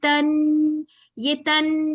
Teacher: जब नून के ऊपर तशदीद आए तो यहाँ पे हमने टू काउंट्स गुन्ना करना है